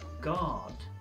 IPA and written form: ɡɑːd (Guard)